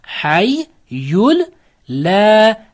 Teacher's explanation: Sukunlik nun harfidan so'ng l harfi kelib qolsa, sukunlik nun harfini l ga o'zgartirib g'unnasiz o'qiymiz, g'unnasiz idg'om.